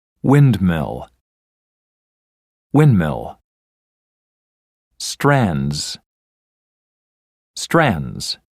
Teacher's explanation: in the first two words the D can be dropped again especially in relaxed or conversational speech